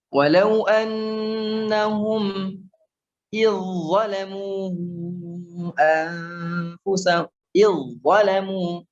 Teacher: Masukkan langsung ke huruf dha dengan sempurna